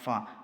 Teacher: മേലെ മുൻപല്ലിന്റെ തലയും താഴെ ചുണ്ടിന്റെ പള്ളയും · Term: ഫായുടെ മഖ്റജ്